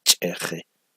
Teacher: la I la pronuncio como si fuera vocal abierta o semiabierta